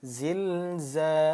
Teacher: Panjangnya 2 harokat, tidak lebih, tidak kurang. Nah, ketika ada mad tabi'i kita bacanya panjang 2 harokat